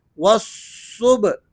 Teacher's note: بیچ میں یہ جو الف ہے اور لام ہے ان کو آپ نے سائلنٹ کر دینا ہے اور واو کو ڈائریکٹ صاد سے ملانا ہے